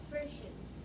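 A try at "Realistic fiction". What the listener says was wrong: Not friction. There's no R. Realistic.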